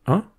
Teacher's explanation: Il s'agit d'une voyelle antérieure, l'équivalent de [ɛ] en nasal. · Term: voyelle nasale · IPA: ɛ̃